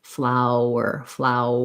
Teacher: we're going from the ow diphthong into the er part